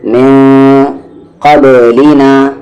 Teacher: قاف حروف اخفا ہے تو من نہیں، من قبلنا، با ساکن ہے قلقلہ